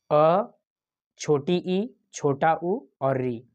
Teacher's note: यहाँ पर दिया हुआ ह्रस्व स्वर 4, अ, छोटी ई, छोटा उ और री, ये हो गए आपके ह्रस्व स्वर। इनके उच्चारण में एक मात्रा का समय लगता है, बहुत कम समय लगता है